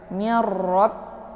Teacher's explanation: sifatnya taqrir ada sedikit getaran di ujungnya · Karena ini ra berharakat fathah, jadi tebal bacaannya. Mirrab ya, sifatnya takrir, ada sedikit getaran di ujung